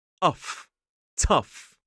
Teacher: we start off with that aspirated t sound